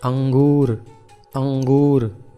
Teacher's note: अनुस्वार का उच्चारण होता है नासिका में नाक में इसका उच्चारण होता है